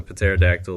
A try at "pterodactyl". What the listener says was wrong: You just pronounced the P in pterodactyl.